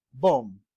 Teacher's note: You see that MB pronounced as M alone, and the B is silent. And all the sounds there, all the instances of letter B there are omitted.